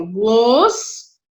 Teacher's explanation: Ela é uma palavra paroxítona, porque olha aqui, ó, glossário, tá? Então, a penúltima sílaba que é a sílaba tônica